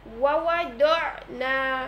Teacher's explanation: এখানে আইনে সাকিন এসেছে, এটি হচ্ছে জাহারের হরফ, অর্থাৎ বাতাস বন্ধ রেখে পড়তে হবে